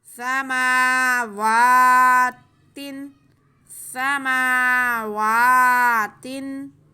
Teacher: سین پہ زبر ہے، میم پہ بھی کھڑا زبر، واو پہ بھی کھڑا زبر، دونوں کو ایک الف کے برابر کھینچنا ہے، صرف سین کو نہیں کھینچنا